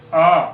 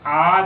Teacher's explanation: अ ह्रस्व है तो आ दीर्घ है, इससे देखिएगा दुगना समय लगेगा इसमें